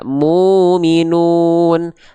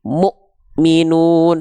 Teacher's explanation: tapi Mukminun suara Mya terhenti karena muya berjumpa dengan Hamzah sukun Hamzah sukun itu punya sifat yang namanya adalah syiddah tertahan suara